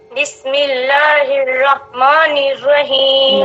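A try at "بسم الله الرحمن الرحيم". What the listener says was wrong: میں ایک ہوتی ہے آ کی آواز، ایک ہوتی ہے اے. تو ہمیں آ کی آواز میں نہیں پڑھنا، ابھی جو بولا اس آواز میں پڑھنا ہے.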